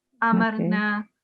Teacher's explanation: just 1 second on the single fatha, amarna, and not 2 seconds